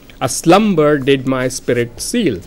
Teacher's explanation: The main foot, which seems to be recurrent throughout the poem, is of the type unstressed, stressed syllable.